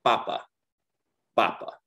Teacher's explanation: it's because of this little accent mark that you see here naturally spanish is going to be emphasized on the second to last syllable